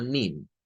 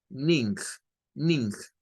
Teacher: en la actualidad en el inglés norteamericano ya no se hace diferencia entre una n y una ng